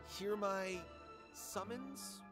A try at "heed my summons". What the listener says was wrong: No, it's not hear my summons, it's heed my summons. Heed!